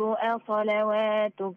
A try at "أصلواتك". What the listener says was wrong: احنا اتكلمنا في حلقة رسم القرآن أو رسم المصحف، رسم العثماني، إن في هنا الواو، هذه الواو لا تنطق واو، لكن مرسوم فوق منها ألف أو واحد كده، اسمه اسمها ألف خنجرية، فبننطقها ألف، بنقول أصلا، مش أصلا وا، أصلاتك.